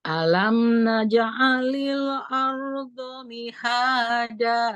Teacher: R-nya agak mengalir sedikit ya, tawasud.